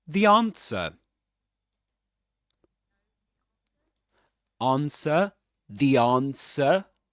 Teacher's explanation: the answer without pronouncing the final R because there's no there's no vowel sound right after it right after that final sound in the word.